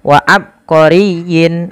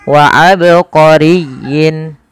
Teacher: Qalqalah artinya memantul. Maka tatkala kita membaca ba di sini harus dipantulkan. Kesalahan yang terjadi adalah tidak memantulkan huruf ba.